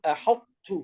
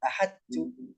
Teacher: لابد أن نأتي بصفة الاستعلاء في حرف الطاء، فيكون إدغامها إدغاما ناقصا